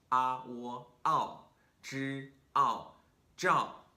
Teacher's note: for the job we have a slide through two different vowels